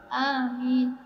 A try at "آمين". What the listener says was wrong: মাশাআল্লাহ ভালো হয়েছে গুড এটা প্র্যাকটিস রাখতে হবে